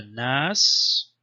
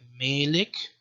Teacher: where the Kasra the short e vowel triggers this thing called imala it's kind of like an like a Germanic umlaut so the